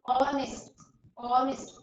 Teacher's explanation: H is silent here